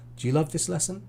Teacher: At the end, because it's a question, my intonation goes up.